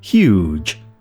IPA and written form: hjuːdʒ (huge)